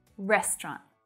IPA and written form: 'rest rɒnt (Restaurant)